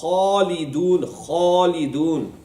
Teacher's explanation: On pronouncing these letters, the root of the tongue stays high towards the upper part of the mouth. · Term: With a full mouth